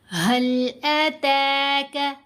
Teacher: ता को लंबा भी करेंगे, ता को बारीक भी पढ़ेंगे